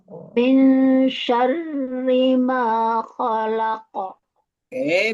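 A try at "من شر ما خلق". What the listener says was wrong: Rinya jangan panjang tapi ditekan.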